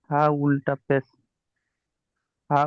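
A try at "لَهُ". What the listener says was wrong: হা উল্টা পেশ হা পড়লেন এক্ষুনি, এখানে হা উল্টা পেশ কি বললেন উপরে? এখানে হা কেন পড়ছেন? লাহু।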